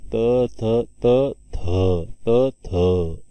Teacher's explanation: दंत्य व्यंजन वर्ण त्याचं उगमस्थान झालंय. महाप्राण मिश्रित व्यंजन वर्ण आहे, कारण त मध्ये ह मिसळ आहे बघा, त थ त थ त थ ऐकू येतं बघा ह आपल्याला शेवटी.